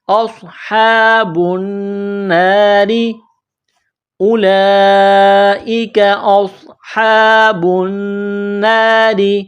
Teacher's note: النا، نون میں آواز ناک میں چھپانی ہے، غنہ کرنا ہے، را زیر ری، را کو باریک کرنا ہے